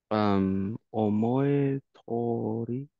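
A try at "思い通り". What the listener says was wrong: Omoe tori is what you might think, but it should be omoe dori with a relative, with the rendaku, the voicing. So, omoi is your thoughts, and tori comes from path, and it means to do as one likes, as one would imagine, basically.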